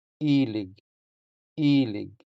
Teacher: Since the first E is stressed, it sounds longer than the unstressed second E.